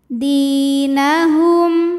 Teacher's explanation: maka cara bacanya Dal ini kita panjangkan dua harakat saja